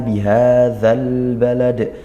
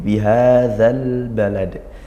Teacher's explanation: dialirkan, ngalir suara lamnya, jangan sampai tawallud zal, atau jangan sampai ditekan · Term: izhar qamariyah